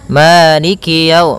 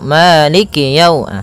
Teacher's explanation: Pada bacaan Maliki di lafal ma ada hukum tajwid berupa mad th'i yaitu adanya fathah bertemu dengan alif panjangnya dua harakat maliki. Kemudian kaf di sini ada huruf kasrahnya maka sempurnakan kafnya jangan seakan-akan diputus.